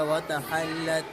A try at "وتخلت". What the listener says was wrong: اس خا کو موٹا پڑھو, خا موٹے حروف میں. وتخلت.